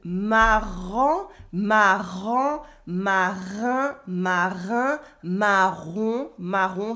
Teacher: this French R from the back of the throat